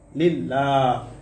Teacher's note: লামের উপরে খারা জবর আসার কারণে এক আলিফ টান হবে মাদ্দে তবাই।